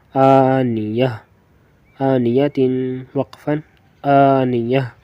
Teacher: تو گولتا کو وقفن میں ہم ہا پڑھتے ہیں